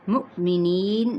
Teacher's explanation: حمزہ ساکنہ ہو جائے گا تو کیا کریں گے، واو کے اوپر حمزہ اور ساکن کی علامت ہے تو جھٹکا دیا جائے گا